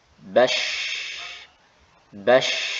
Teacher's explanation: Huruf shin, ya, maka tengah lisan kita naikkan, tetapi ada celah yang muncul darinya suara, sehingga ketika kita baca dalam keadaan sukun berbunyi seperti ini. · ada nafas yang keluar dan temponya itu lebih lama ketimbang huruf-huruf yang sebelumnya sudah kita praktekkan